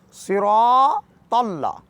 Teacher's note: اس مکمل جملے کو پڑھنے کا طریقہ کار صاد کو موٹا کر کے پڑھنا ہے